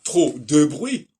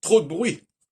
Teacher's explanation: en français, grâce à l'utilisation du E muet, si on peut dire, on combine les consonnes entre elles